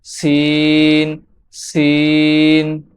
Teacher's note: সিন জিহ্বার আগা সামনের নিচের দুই দাঁতের পেট ও আগার সঙ্গে লেগে উচ্চারিত হয়।